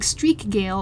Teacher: A name like Streakgale, on the other hand, is much more choppy because, despite the brilliant imagery, K and G both need their own sorts of emphasis. You'd have to pause and separate the words out, or you're going to end up saying Streagale or Streakgale.